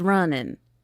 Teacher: We tend to drop the G in ing